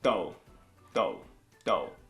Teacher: tone four, the low falling tone